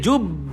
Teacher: cakap qalqalah besar, dia punya tekanan dia kuat sikit, tapi jangan lama sangat tuan-tuan. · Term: Qalqalah akbar